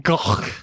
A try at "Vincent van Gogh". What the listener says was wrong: I watched a Dutch person on the show say that the GH on the end is a noise.